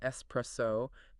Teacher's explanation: There is no X sound, no X sound in that word. It's a hard s.